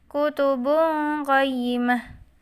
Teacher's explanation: Bungqoh adalah bacaan ikhfa karena ada dhammah tanwin bertemu dengan huruf qaf, maka dibaca samar dan mendengung